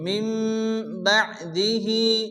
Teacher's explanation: হবে ওয়া কফাইনা মিম বাদিহি নুসিনের পরে বাসে এখানে কলব হবে নুনকে মিম দ্বারা পরিবর্তন করে আলিফ গুণ করে পড়তে হবে